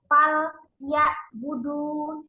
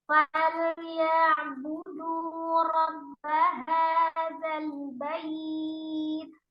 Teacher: Nah, falya ada lam sukun di situ, kemudian ain sukun yang sifatnya tengah-tengah, tawassut atau bainiyah ya, mengalir sebagian.